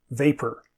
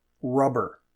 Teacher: In the middle of a word, p is aspirated mildly and b is not aspirated.